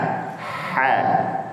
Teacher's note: Makhraj huruf ha terletak pada tengah tenggorokan.